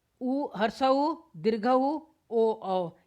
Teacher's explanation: वे स्वर जिनका उच्चारण करते समय ओष्ठ गोल हो जाते हैं अर्थात वृत्त जैसी आकृति ग्रहण कर लेते हैं उन्हें वर्तुल, गोलाकार, वृत्ताकार या वृत्तामुखी स्वर कहते हैं।